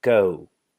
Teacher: we end, our lips are closed and rounded. So we say go.